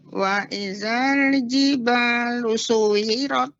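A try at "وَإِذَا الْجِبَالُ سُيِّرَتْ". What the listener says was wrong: tasydid, Nek. Suyirat. ada tasydidnya memang seperti kuwirat dan suyirat. Sui langsung diturunkan ke bawah.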